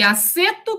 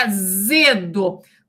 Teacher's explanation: Então, esse som de S, ele é o som surdo que passa para o seu fonema homorgânico, Z, que é o fonema sonoro. Então, esse som de S, ele é surdo. Esse som do Z, ele é o sonoro.